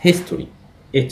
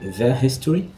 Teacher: history برضو حرف ال H لكن ال H هنا منطوقه، انا بسمعها صح